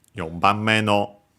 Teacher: Actually, in this case, would then become unaccented again because we had the possessive particle no, and that causes words accent on the last syllable to become unaccented